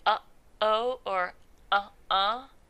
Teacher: larynx so typically you have what's called a glottal stop where you cut off the air at your larynx so your vocal cords are totally closed and no air is going through we have some glottal stops in English when we say uh-oh